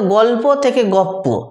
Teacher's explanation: দ্বিতীয়টা ঠিক থাকবে, প্রথমটা পাল্টাবে, দ্বিতীয়টার জন্য প্রথমটা পাল্টাচ্ছে। যেমন দেখো গল্প থেকে গপ্প ছিল ল যুক্ত প, হয়ে গেছে প যুক্ত প, অর্থাৎ প দ্বিতীয়টা ঠিক থাকছে কিন্তু লটা অর্থাৎ প্রথমটা পাল্টে প হয়ে গেছে। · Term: পরাগত সমীভবন